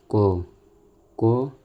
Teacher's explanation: अब उदाहरण से भी समझ लीजिए, जैसे क बोलते हैं, क को बोलते समय जीभ गले के पास छूती है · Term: स्पर्श व्यंजन